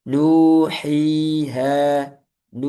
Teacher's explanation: Nu, hi ha panjangnya dua harakat